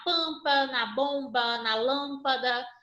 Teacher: E aqui são as vogais nasais, que são aquelas que a gente fala da família do AM, EM, IM, assim como o AN, EN, que é o som nasal, pronunciado junto com a boca e o nariz ao mesmo tempo